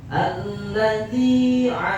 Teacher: Panjangnya cukup satu alif atau dua harakat. Enggak bisa lebih, enggak bisa kurang. Sekalipun yang bacanya muamar tuh internasional tetap aja dua harokan.